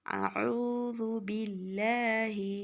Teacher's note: باللہ میں لام کو باریک پڑھنا ہوگا، یعنی سادہ طریقے سے پڑھنا ہوگا